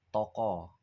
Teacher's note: Toko yang dari to-nya itu to, o-nya ini terbuka